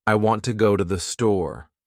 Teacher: In this sentence, want and store are stressed and the other words are said quickly and softly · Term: Sentence stress